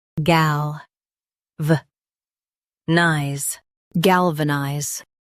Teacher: Emphasize gal and keep vanize smooth.